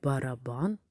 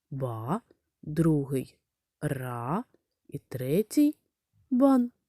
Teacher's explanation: в слові барабан наголошений третій склад бан